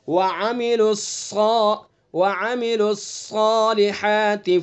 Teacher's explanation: صاد کے اندر جو صفت استعلا ہے اس کو پر کرنا ضروری ہے. اگر یہ صفت استعلا اس کے اندر جو پائی جا رہی ہے، اگر اس صفت کو ہم ختم کر دیں گے تو یہ حرف تبدیل ہو جائے گا، یہ سین سے بدل جائے گا پھر.